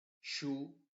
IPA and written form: ʃuː (Shoe)